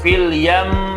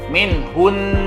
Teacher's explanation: itu kan mim tasydid ya, tetap dibaca gunnah ataupun didengungkan, tidak tergesa-gesa